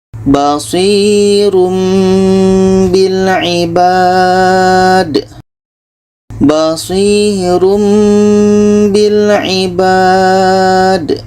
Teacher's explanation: Bunyi tanwin kita ubah kepada mim. Jangan dibaca basirun. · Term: iklab